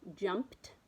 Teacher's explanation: that ed kind of makes a T sound in jumped